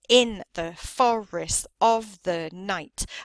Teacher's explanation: And you can see how that last stress falls on the last word.